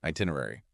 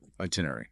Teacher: Notice the stress is on the tin part.